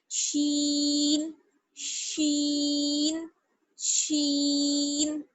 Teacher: زبان کا بیچ والا حصہ اور اوپر کی طرف جب ہم تالو کی طرف اٹھاتے ہیں تو وہاں سے شین ادا ہوتا ہے